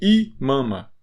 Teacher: O I no começo, ele não é nasal.